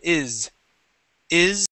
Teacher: when you have words like is, okay, you hear that vibration. It's very slight, but it's there. Is, is. Okay, and when reading the word dreams, okay, dreams, okay, we don't say dreams, okay, with an S sound, it's dreams, okay, it has that vibration, okay? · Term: voiced S